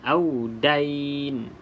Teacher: Hati-hatilah bila menyebut audain ni tidak boleh membariskan ya. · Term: mad lin